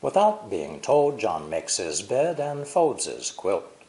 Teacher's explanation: The emphasized words are without and told. Remember that long words are stressed on only one syllable, without.